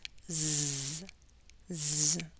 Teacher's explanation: But when you produce a Z, it's a voice sound. You will feel vibrations.